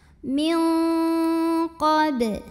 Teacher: Unzila min ada ikhfa ab'ad karena nun sukun bertemu huruf qaf. Maka nun sukun dibunyikan samar-samar, siap-siap ke qaf disertai dengung. Dengungnya besar karena qaf ini makhrajnya jauh dari nun